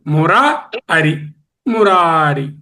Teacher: మురాలో అకారము, అరిలో అకారం, రెండు హ్రస్వాలే అయినా వచ్చేది ఆవే. దీర్ఘము ప్లస్ హ్రస్వము ప్లస్ దీర్ఘము.